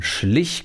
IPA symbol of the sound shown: ç